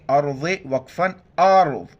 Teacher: را کو موٹا کریں گے